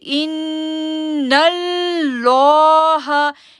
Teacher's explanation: لا کو ہم نے ہیوی کرنا ہے کیونکہ اللہ کے نام سے پہلے نون پر زبر آ رہی ہے. جب اللہ کے نام سے پہلے زبر آئے تو جو لام ہوتا ہے اس کو پر آواز سے پڑھتے ہیں